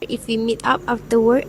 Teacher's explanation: Okay, last, the vowel in mid is shortened and the final t is retained clearly